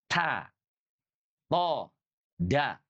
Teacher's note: Di mana makhrajnya? Ujung lidah kita bersentuhan dengan gusi atas.